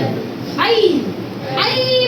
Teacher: ए चा उच्चार अ अधिक इ मोठा किंवा छोटा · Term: संयुक्त स्वर